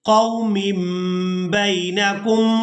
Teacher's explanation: اب یہاں پر جو تنوین میں نون کی آواز ہے، اس کو ہم نے میم کے ساتھ بدل کر ادا کرنا ہے، کیونکہ یہاں پر ہم انقلاب کریں گے۔